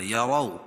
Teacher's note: را کو پور پڑھیں گے کیونکہ را کے اوپر زبر ہے